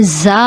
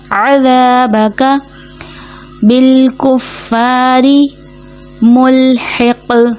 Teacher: ذال نرمی سے ادا ہوتا ہے جبکہ غلطی یہاں پہ زا ادا کر دیا جاتا ہے